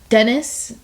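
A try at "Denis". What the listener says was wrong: Yeah, I think they say Denny. They don't pronounce the S.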